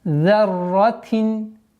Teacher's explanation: Ра удваиваем и уходим на танвин касра